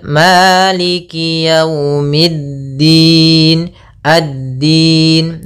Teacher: alif lam yang ditulis tapi tidak dibaca langsung ke huruf Dal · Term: alif lam syamsiyah